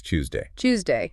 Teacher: in Estuary and Cockney, that T and Y sound crash together and merge into a C. So it becomes Tuesday. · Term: Yod coalescence